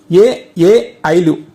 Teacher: ఏ ఏ ఐలు కంఠ్య తాళవ్యాలు అంటే కంఠము మరియు తాళవ్యం. తాళవ్యం అంటే దౌడ. ఈ రెండింటి సాయంతో పలుకుతాం కాబట్టి వీటిని కంఠ్య తాళవ్యాలు అని అంటాం.